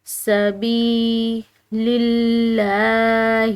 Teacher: یہاں پر جو ہے لفظ اللہ کی لام باریک ادا کی جائے گی، کیونکہ اس کے پیچھے والا حرف یعنی کہ لام اس کے نیچے زیر ہے۔